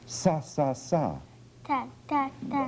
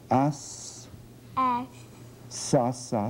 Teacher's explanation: she has definite T substitution for S